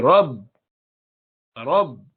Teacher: مثلا آپ با بولنا چاہیں ساکن حالت میں تو رب، رب، تو کیا ہوا کہ با کے لیے دونوں ہونٹ ٹکرائے، آپس میں ملے، رب. تو جب یہ دونوں ملیں گے تو ساکن حرف ادا ہوگا.